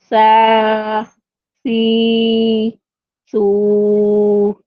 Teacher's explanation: सा को अदा करते वक्त हमें सीटी की आवाज नहीं आनी है। · سا میں بھی آپ کو ادا کرتے وقت، ادائیگی کے وقت آپ کو یہ پتا ہونا چاہیے کہ سا کو ادا کرتے وقت ہمیں سیٹی کی آواز نہیں آنی ہے، ٹھیک ہے، نرمی سے ادا ہوگا یہ۔